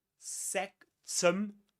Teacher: There's a schwa there in the second syllable.